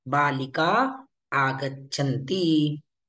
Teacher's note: विसर्ग का लोप हुआ, क्योंकि विसर्ग के आगे कोई भी स्वर आया तो भी चलेगा। तो यहाँ पर आगच्छन्ति का आ है, चलेगा।